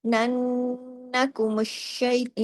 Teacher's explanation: یہاں دیکھیں نون پہ تشدید کی وجہ سے بڑا غنہ ہو رہا ہے